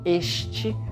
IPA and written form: eʃte (este)